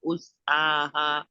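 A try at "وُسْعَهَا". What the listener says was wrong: वुस्आहा। वा नहीं, आप उस पढ़ रहे हैं, वाव है। वुस आहा वुस्आहा। इसको ना आपने निशान लगाए, आप हमजा के साथ पढ़ते हैं, इसको वाव के साथ पढ़ना है। अब अब मुझे आवाज आई है, वुस। पहले आवाज नहीं आ रही थी।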